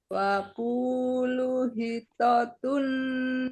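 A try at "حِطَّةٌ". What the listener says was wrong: Ada tasdid, Bu, di to. Wakulu hitotun naghfir lakum khotoyakum.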